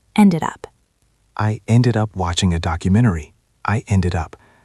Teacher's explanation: Focus on the link between ended and up. It sounds like one word.